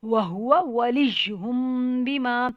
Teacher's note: جب بھی جزم والے میم کے آگے با آتا ہے تو اس میم پہ ہم غنہ کرتے ہیں